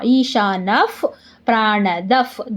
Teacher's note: ನ ಮುಂದೆ ವಿಸರ್ಗ, ವಿಸರ್ಗದ ಮುಂದೆ ಪ, ಅದಕ್ಕೆ ಅರ್ಧ ಫ.